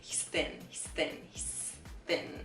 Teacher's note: We're not exaggerating the TH sound so much there. It's like the TH sound happens, but the tongue doesn't come out between our teeth.